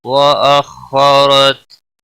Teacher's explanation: مت تا ساکن کو ہلانا نہیں، وأخرت خا حروف مستعلیہ میں سے ہے، پر پڑا جائے گا۔ را زبر کی وجہ سے پر پڑا جائے گا، تا ساکن ہی پڑا جائے گا وقف کی صورت۔